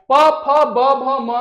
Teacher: प फ ब भ म में जो है केवल हम लोग का ओट काम कर रहा है